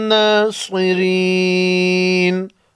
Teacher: ما لهم من ناصرین، صاد کو موٹا پڑھیں گے